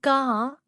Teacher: வணக்கம் குழந்தைகளே இன்று நாம் உயிர்மெய் எழுத்துக்களில் ஆ வரிசையை கற்க போகிறோம். க என்பது குறில் கா என்பது நெடில் நீண்டு ஒலிக்கும்